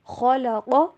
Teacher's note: خا اور قاف دونوں کو موٹا کر کے پڑھیں، اور قاف کو لمبا نہیں کرنا